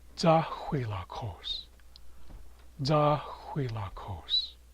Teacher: Placing emphasis on the first syllable. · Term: accent placement